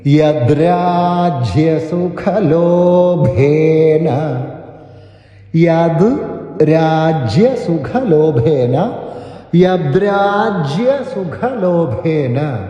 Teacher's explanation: ആയദ് എന്നുള്ള ദ മൃദുവായിട്ടുള്ള ദ ആണ് അത് കേൾക്കാൻ പറ്റുന്ന തരത്തിൽ ഉച്ചരിക്കുക യദരാജ്യസുഖലോഭേന [പൊട്ടിച്ചിരി] രാജ്യ രാജ്യയ രാജ്യ ശ്രദ്ധിക്കുക